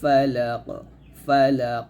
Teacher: ফালাক এই কফটা কলকলা করবেন